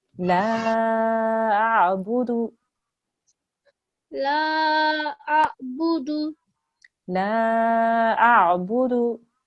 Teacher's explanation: You are elongating this slightly. You need to make sure that that dal is just for 1 second.